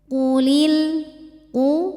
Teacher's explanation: karena harakatnya dah maka kita kumpulin atau monyongin bibir kita u qof tebal tidak ada anginnya ya pangkal lidah kita ngangkat jangan terlalu nyeklok enggak ya jangan ku nanti ke Kaf ini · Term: Qaf tebal